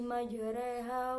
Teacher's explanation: Imalah ialah mencondongkan alif mendekati ya.